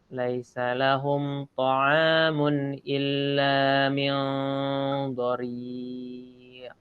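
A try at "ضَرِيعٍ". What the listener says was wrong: Ain. Ainnya lebih baik ini ya. Dhari'. Kalau itu tidak hamzah.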